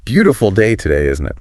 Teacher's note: Emulate the tone, the falling intonation, the casual rhythm.